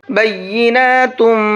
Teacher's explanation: یہاں تنوین کے بعد میں میم ہے تو یہاں پر بھی غنہ کریں گے